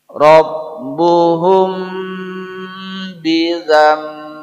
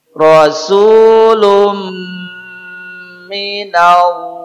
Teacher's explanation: pada sifat huruf yni sifat gunah kita ulang huruf mim tadi selain makhraj Dia pada dua Bibir dia juga mengalir suaranya sebagian ke rongga hidung namanya ghunah lebih kuat lagi ghunah terjadi jikalau mim dan Nun terkena sukun